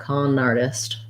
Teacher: You can link them together. You don't need a break between the two, so your N can kind of move on the R